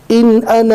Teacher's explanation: الف کو نہیں پڑھنا ہے، صرف ہمیں نارمل انا پڑھنا ہے